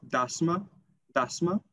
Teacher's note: in standard albanian it is dasma dasma with the schwa in the end